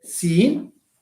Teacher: When you say see of seen for a long time, you will feel that the sound also comes from the nose. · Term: nasalization